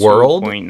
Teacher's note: I think your R kind of bled into the L a little bit, and I think you kind of did world or like we didn't get quite the dark L target.